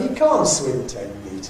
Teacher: the nucleus then on can't because it Bears the polarity the negative